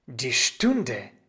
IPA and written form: diː ˈʃtʊndə (die Stunde)